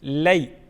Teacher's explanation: لی، یا ساکن سے پہلے حرف پر زبر ہے، یا لین ہے، یا لین کو ہم جلدی پڑھیں گے اور نرمی کے ساتھ اس کو ادا کریں گے